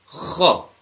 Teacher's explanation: kha was from the top part of the throat, where we scrape the top part of the throat, and we have to put a bit more effort.